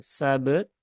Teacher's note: ba dengan ta itu punya syiddah, kemudian ba ada qalqalah, ta dia ada hamsnya.